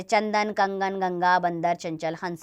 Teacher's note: अनुस्वार का उच्चारण नाक की सहायता से किया जाता है। अनुस्वार का चिन्ह बिंदु है, इसका उच्चारण नौ के समान होता है, जैसे चंदन, कंगन, गंगा, बंदर, चंचल, हंस आदि इसके उदाहरण है।